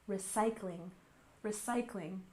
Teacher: recycling with emphasis on the second syllable